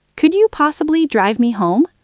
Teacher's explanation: start high, go low in the middle, and go up at the end.